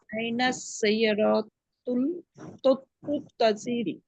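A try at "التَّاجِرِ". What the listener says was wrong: আচ্ছা, এই যে আপনার তাজিরি বলতেছেন, তাই একালিপ মাত বাদ হয়ে গেল না? সাইয়ারাতুত তাজিরি মিন আমেরিকা, অর্থ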